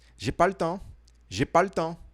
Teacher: Aqui você vai engolir um pouco esse le.